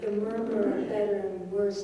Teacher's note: The next 3 lines have a lot of sounds and lots of unstressed syllables, so nothing sticks out. It just moves along slowly.